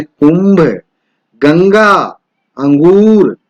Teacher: यह स्वर के बाद आने वाला व्यंजन है जिसकी ध्वनि नाक से निकलती है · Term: अनुस्वार